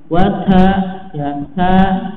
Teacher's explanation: Kemudian ta ini ada sedikit nafas yang ngalir ya, kan ta ya, tapi ta ya, ada sedikit nafas yang mengalir ya.